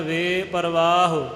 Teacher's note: ਇਹ ਵੇ ਜਿਹੜਾ ਹੈ ਇਹਨੂੰ ਥੋੜ੍ਹਾ ਜਿਹਾ ਬਿਲਕੁਲ ਥੋੜ੍ਹਾ ਜਿਹਾ ਆਪਾਂ ਲੰਬਾ ਕਰਕੇ ਥੋੜ੍ਹਾ ਜਿਹਾ ਅੱਡ ਪੜਾਂਗੇ। ਕਈ ਜਿਹੜੇ ਨੇ ਵੇਪਰ ਕਹਿ ਕੇ ਫਿਰ ਵਾਹੋ ਕਹਿੰਦੇ ਨੇ, ਵੇਪਰ ਵਾਹੋ ਐ ਨਹੀਂ, ਇਹ ਵਾਵਾ ਜਿਹੜਾ ਹੈ ਇਹ ਨਾਲ ਥੋੜ੍ਹਾ ਜਿਹਾ ਸੰਬੰਧਕ ਕਰਕੇ ਵੇ ਪ੍ਰਵਾਹ।